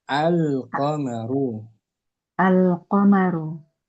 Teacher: Huruf Yang qamariyah pertama, Qamariyah adalah diucapkannya huruf lam dengan jelas pada isim yang diawali dengan alif lam. Contoh al-qamaru. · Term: idhar qamariyah